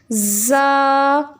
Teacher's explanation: जब आप तीनों हरूफ को अदा करते हैं तो इनमें से सिटी की आवाज़ आती है आपको। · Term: सिटी वाले हरूफ